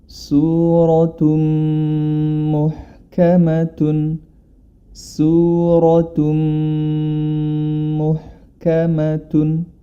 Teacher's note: Kita ketahui bersama bilamana nun sukun atau tanwin bertemu dengan mim, maka cara membacanya adalah dia dimasukkan huruf ta tersebut ke dalam huruf berikutnya, yakni pada huruf mim. Dan harus disertai dengan gunah atau dengung, ya. Maka hukum bacaan di sini adalah idgham bighunah.